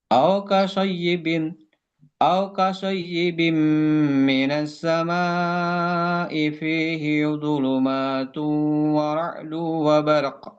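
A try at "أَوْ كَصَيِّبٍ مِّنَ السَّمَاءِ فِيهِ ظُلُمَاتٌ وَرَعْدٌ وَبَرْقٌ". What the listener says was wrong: Gunanya lebih ditahan. Dhulumatun wa ra'dun wa barq. Wa barq.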